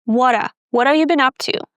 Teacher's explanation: When speaking very fast, sometimes we even drop the vv sound in have.